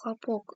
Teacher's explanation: ударение падает на последний слог, яғни ең соңғы буынға түседі.